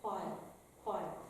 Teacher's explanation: It's just a tiny bit of a puff of air. Basically, it's an unvoiced oo sound. So you put your lips as though you're going to say ooh, and you say while, while. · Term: unvoiced W